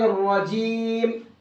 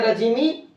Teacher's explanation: اگر ہم یہاں پر وقف کریں گے تو آخری حرف پر جزم دے کر سانس توڑیں گے۔ اگر ان 5 جگہوں پر وقف ہو رہا ہے تو ان کو ہمیں جزم سے بدل دینا ہے، 5 کو، چاہے وہ زبر ہو، زیر ہو، پیش ہو، یہ 2 زیر ہو 2 پیش ہو، ان 5 کو جزم سے بدل دینا ہے اور آخر میں جزم دے کر کے آیت کرنا ہے۔